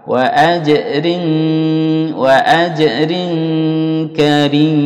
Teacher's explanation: ikhfa itu ditahan dua harokat